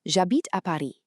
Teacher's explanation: even though habite starts with an H, in French, that H is completely silent, which means the word effectively starts with a vowel sound.